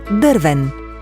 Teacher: Тук ударената сричка е първата и се уверяваме, че гласният звук е Ъ, т.е.